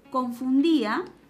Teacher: Aquí tenemos esta secuencia vocálica IA, en la cual notamos de que la I tiene la mayor fuerza de voz. Cuando la I suena más, estamos frente a un hiato acentual.